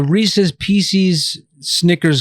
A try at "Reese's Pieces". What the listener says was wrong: Sounds like feces. It's pieces. Well, it's Reese's. It's Reese, and it's his pieces. Reese's.